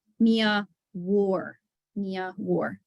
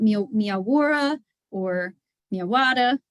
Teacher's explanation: the E gets lost there and you get a very strong English R